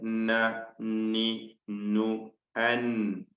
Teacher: അപ്പം നൂന് അസ്ലിൽ തന്നെ നൂന് ഉച്ചരിക്കുവാൻ മൂക്കിന്റെ സഹായം ആവശ്യമാണ്. ഖൈശൂമിന്റെ ഭാഗം ചേർന്ന് വന്നുകൊണ്ട് വേണം അത് ഉച്ചരിക്കണമെങ്കിൽ എന്നർത്ഥം. · ഖൈശൂമിന്റെ ഭാഗം ചേർന്ന് വന്നുകൊണ്ട് വേണം അത് ഉച്ചരിക്കണമെങ്കിൽ എന്നർത്ഥം. അപ്പോൾ ഈ നൂനുകളെല്ലാം ഉച്ചരിക്കപ്പെടുന്നത് നാവിന്റെ തലപ്പും മേലെ മോണയും, നാവിന്റെ അറ്റവും മേലെ മോണയും ചേർത്തുകൊണ്ടാണെന്ന് മനസ്സിലാക്കണം. ലാമിന്റെ മഖ്റജിൽ നിന്നും അല്പം താഴോട്ടാണ്. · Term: ഉന്നത്ത്